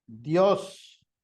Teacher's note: La I, que es una vocal cerrada, y la O, que es una vocal abierta. Por tanto, la palabra Dios es una sola sílaba, porque se forma lo que llamamos un diptongo.